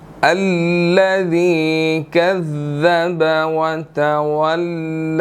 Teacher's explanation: تو یہاں پر ذال کے بعد جو ہے وہ یا ہے، یا مدہ ہے، تو ہم اس کو 1 سیکنڈ لمبا کریں گے.